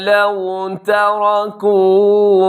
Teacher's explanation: لو واو لین ہے، واو ساکن سے پہلے زبر تو واو لین۔ لو تَرَكُوا، تا باریک، را اس کے اندر پر ہے، اور باقی حرف جو ہے کاف اور واو وہ بھی باریک ہوں گے۔